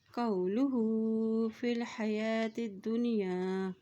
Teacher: لام پیش لو ہا الٹا پیش ہو کو ایک حرکت لمبا ادا کریں گے۔ قولہ فی الحیات الدنیا، فا کی زیر کو لام کے ساتھ ملاتے ہوئے پڑھیں گے کیونکہ لام کے اوپر جزم ہے۔ · قو واو کے پر جزم ہے اس لیے قاف کی زبر کو واو کے ساتھ ملائیں گے، لام پیش لو ہا الٹا پیش ہو کو ایک حرکت لمبا ادا کریں گے۔